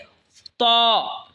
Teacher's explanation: ত জিহ্বার আগা সামনের ওপরের দুই দাঁতের আগার সঙ্গে লাগায় উচ্চারণ হবে ত।